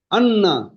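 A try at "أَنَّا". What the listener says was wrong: আন্না হবে না, আন একালি গুণনা করতে হবে। এখানে নুন, নুন, জি, নুন এবং মিমের উপরে তাজদিদ থাকলে গুণনা করা ওয়াজিব। একালি পরিমাণ গুণনা করে পড়তে হবে।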